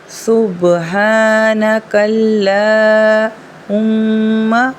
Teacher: اب یہاں دیکھیں یہاں پر تشدید کا نشان ہے یعنی میم مشدد ہے۔ جب بھی میم مشدد ہوتی ہے تو ہم غنہ کرتے ہیں، تو یہاں پر میم پر ہم لوگ غنہ کریں گے۔